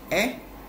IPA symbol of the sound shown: e